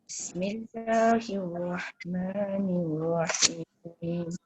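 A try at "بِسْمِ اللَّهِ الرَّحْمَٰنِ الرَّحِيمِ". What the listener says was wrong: Dia bismillah tu, ba dia mesti kena letak baris bawah tu betul-betul bunyikan bis, jangan bismillah. Kadang-kadang sin je kan. Bismillah, dia kena jelas ba baris bawah.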